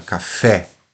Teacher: Então a tônica, a tonicidade recai no fé e não no cá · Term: oxítona